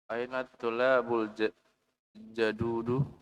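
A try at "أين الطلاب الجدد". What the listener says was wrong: Naam, at-tullabu. Ada tasdid di atas lam. At-tullabu. Al-jududu. Aina tullabul jududu.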